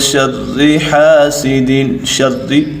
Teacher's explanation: شر یہاں آواز نیچے گرائیں گے اور را کو باریک پڑھیں گے کیونکہ یہ ہمیشہ قانون ہے کہ زیر کو ہمیشہ آواز نیچے گرا کر ہی ادا کریں گے، اور زبر اور پیش کو آواز اوپر یعنی زبر کو منہ اور آواز کھول کر اور پیش کو دونوں ہونٹوں کو گول کر کے ادا کریں گے۔